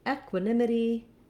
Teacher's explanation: Has a little secondary stress because of that clear F vowel, but in equanimity, our nim syllable is where we have the stress. So you want to hold your nim longer and be shorter and more reduced on the other sounds.